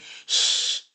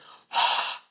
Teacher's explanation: if I take the pitch out of my voice and I just blow air through an e-shaped system versus an A-shaped system, it's going to sound interestingly higher